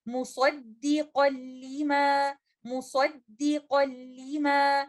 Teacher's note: नून साकिना मुकम्मल तौर पर मर्ज हो जाएगा लेटर लाम में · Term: इदगाम कामिल